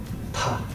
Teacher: If you want to get technical, linguists call this a bilabial plosive. Bilabial means two lips. Plosive shares the same root word as explosion. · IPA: /p/